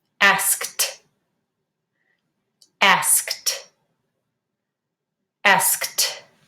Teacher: It's a voiceless sound, so you need to say it with a T.